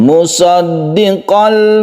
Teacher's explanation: tanwinnya sudah masuk ke lam dan tidak berdengung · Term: idgham bilagunnah